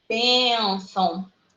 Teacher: Ela é paroxítona. Ela tem ali a sílaba tônica na penúltima.